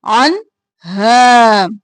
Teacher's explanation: نون پر اظہار، عنہا الف کے برابر کھینچیں گے